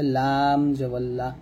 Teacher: জিহ্বার আগার কিনারা উপরের মারি দাঁতের গোড়ার সঙ্গে লাগিয়ে লামটা উচ্চারণ করতে হবে